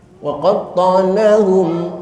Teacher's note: mim mati ketemu fa, ini idhar, jelaskan mimnya